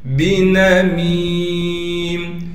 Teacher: میم کے بعد یا ساکن ہے حروف مدہ میں سے، لہٰذا میم کو ایک الف کی مقدار کھینچیں گے